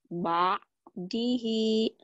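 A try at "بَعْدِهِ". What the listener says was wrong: Ba'dihi kurang neken ya.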